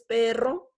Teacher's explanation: la vibración es un poquito más fuerte y un poco más larga